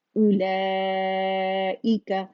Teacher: इसे जस्ट हमजा दम्मा ऊ पढ़ना है, इसे वाव मद्दा नहीं बनाना